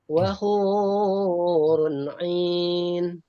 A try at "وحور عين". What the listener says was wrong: Matobinya jangan kepanjangan ya. Satu alif aja. Wahurun ain. Kalau ain boleh panjang karena madlin pada disukun boleh. Wahurun ain ya.